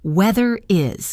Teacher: Notice how weather is kind of links together.